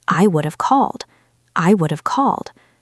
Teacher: Notice that the stress is on the main verb. We don't say I would have called.